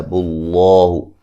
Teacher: لفظ اللہ کو خوب موٹا ادا کریں گے